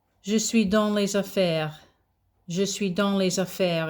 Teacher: S before a vowel before an a there, you've got this liaison of sound, so it sounds like a z.